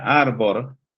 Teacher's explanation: en latin se decía arbor con r final, fíjense la vibrante simple al final